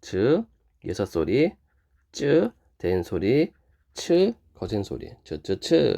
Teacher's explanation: 공기가 모았다가 터져 나오면서 마찰되는 소리 파찰음 역시 마찬가지로 즈 섯 소리 즈 된 소리 츠 거센